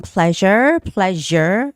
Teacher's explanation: That's the voiced sound of the sh sound.